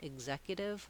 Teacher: They can say X with the red tent vowel and the K and S sounds. They can also say ig, like in executive, with a voiced G sound